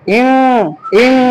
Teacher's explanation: আমরা এমনি পড়ছিলাম কি ইনসানুন, কিন্তু নুন সাকিনের পরে সিন হওয়ার কারণে ইনসানুন না পড়ে আমাদেরকে পড়তে হবে ইং, ইং অনেক স লাগাই নিতে হবে।